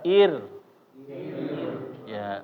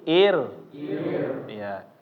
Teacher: ketika ro sukun Tapi sebelumnya berharakat kasrah ya maka dia dibacanya secara tarqik juga